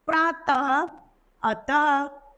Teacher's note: विसर्ग किसी वर्ण के पीछे लगाया जाता है, 2 बिंदु के रूप में लगा दिया जाता है और विसर्ग का उच्चारण ह की ध्वनि निकलती है